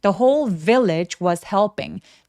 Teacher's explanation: The whole village 할 때 whole 할 때 W는 묵음이에요. 그래서 whole H를 또렷하게 소리 내는데 바람이 먼저 새어 나올 수 있게 해주세요